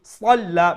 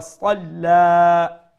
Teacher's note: make sure you pronounce the sad with a fuller sound so that it does not sound like a sin, and at the end we will stretch it one alif long and we'll stop abadan idha salla.